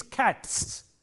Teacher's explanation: For example, if you have a word like cat, C-A-T, cat, this sound, t, is a voiceless sound, and therefore when you make it a plural, it takes a voiceless sound again, s. So it is cats.